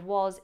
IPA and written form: ..ɒz (was)